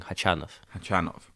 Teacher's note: I'm pretty sure the stress on the second syllable.